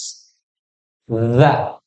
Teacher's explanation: Jadi ujung lidahnya ditempelkan di ujung gigi seri yang atas. Za. Lidahnya agak keluar. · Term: huruf zal